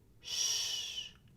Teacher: hurts ends in an S your starts with a Y we blend them together with an SH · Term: blending